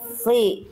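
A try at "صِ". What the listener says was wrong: Oke, lagi jangan nanggung, dorong lagi. Sli. Sli. Sli. Oke, iya, bayangkan dorong lidahnya ke dalam kayak bunda, seperti Bunda seolah-olah mau menelan sesuatu, dorong ke dalam lidahnya. Sli.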